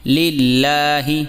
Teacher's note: لام لام زیر لل، لام کھڑا زبر لا، ہا زیر ہی، للہ۔ لفظ اللہ کے لام کو یہاں باریک پڑھا جائے گا کیونکہ اس سے پہلے زیر ہے۔